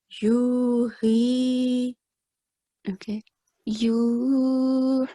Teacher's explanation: ha has a prominent sound. It comes from the middle of the throat.